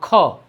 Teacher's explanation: ख के जब उच्चारण कर रहे हैं तो देखेंगे क और ह इस तरह उच्चारण होगा ख, तो कहीं ना कहीं क और ह है। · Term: महाप्राण